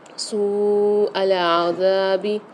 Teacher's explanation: یہاں پر مد آ رہا ہے واو کے اوپر، اور واو مدہ بھی آ رہی ہے، تو اس کو 3 سے 4 الف کی مدار کھینچیں گے